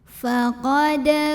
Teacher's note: Karena ada huruf qalqalah yaitu dal yang sukunnya sukun asli dan ada di tengah bacaan. Maka cara bacanya adalah dipantulkan dengan pantulan yang kecil dan tetap dialirkan pantulannya. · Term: qalqalah sughra